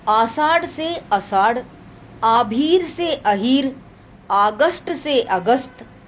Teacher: हस्वीकरण, दीर्घ स्वर का हस्व हो जाना